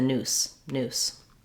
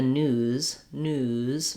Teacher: One of the ways that we show that it's a Z sound is that we hold the vowel a little longer. So when I'm saying it was in the news, my oo is going to be longer than if I was saying it's in the noose.